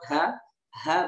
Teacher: ha berada di tenggorokan kita paling bawah ya Atau laki-laki punya zakuna dibawa zakun gitu ya di bawah